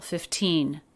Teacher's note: But 15 has a true T stress on the second syllable.